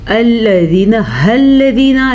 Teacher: الذین، الذین، لام کو لمبا نہیں کرنا۔ بعض لوگ پڑھتے ہیں زینا، نہیں، یہ غلط ہے۔